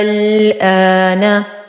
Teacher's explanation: الكلمة الوحيدة في القرآن التي حوت مدا لازما كلميا مخففا، فقد جاء فيها حرف مد وبعده حرف ساكنا سكونا أصليا، فتكون تهجئتها على النحو التالي: همزة فتحة ألف مد.